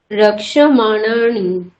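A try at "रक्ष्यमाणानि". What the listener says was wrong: রক্ষ্যমাণানি, হ্যাঁ, রক্ষ্যমাণানি। এখানে দেখুন, এখানে দেখুন সকার রয়েছে, সকারের পরে ইয়কার রয়েছে, রক্সি এখানে কয়স রয়েছে না, সকার রয়েছে, তারপরে ইয়কার রয়েছে, তারপরে ম রয়েছে, তারপরে আ রয়েছে, তারপরে মূর্ধন্য। দেখুন এখানে দেখুন ইয়কারটা এখানে আসছে, মকারটা পবর্গের মধ্যে আসছে।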